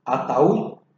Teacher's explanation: se carga la voz en la U, termina en consonante D, pero igual se debe tildar. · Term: hiato